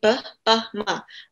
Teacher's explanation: Jadi bilabial itu be, pe, sama me.